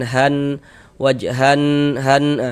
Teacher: Kita gunnahkan, jadi kita dengungkan. Jadi di bagian han, wajhan, han, itu kita tahan sejenak, kita panjangkan. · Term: gunnah musyaddadah